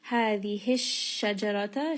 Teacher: shin is going to have tafashi, meaning that that sound is kind of spreading within the mouth just a little bit.